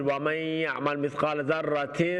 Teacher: nasal sound کامل غنّے کے ذریعے سے نون کو چھپاتے ہیں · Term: اخفا